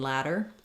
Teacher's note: we also naturally Do The Flap when there's two D's in the middle like in ladder